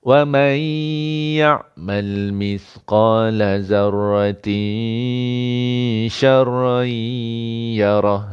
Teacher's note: dengung pada zarratin ni dah nak ready sebut shin